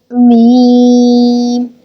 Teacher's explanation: from the dry part of the lips